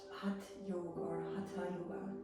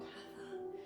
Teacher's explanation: So that's that sound of Hatha Yoga. So the tongue goes to the front of the teeth, hence dental aspirated.